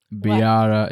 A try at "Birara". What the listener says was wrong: You can't do the R's.